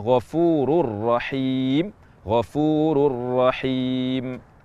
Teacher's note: nun mati atau tanwin bertemu dengan huruf ro yang kita baca adalah huruf ronya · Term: idgham sempurna